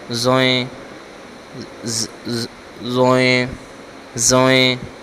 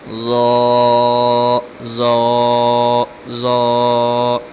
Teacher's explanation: اس طرح کے الفاظ یا اس طرح کی جو آواز ہے وہ اس میں نہیں نکلے گی۔ اس کا پڑھنا ہے ضا۔ پڑھنا نرمی سے ہے لیکن آواز موٹی آئے گی۔